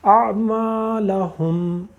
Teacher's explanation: آخر میں میم آئی، ہونٹ ہم نے پورے بند کر دی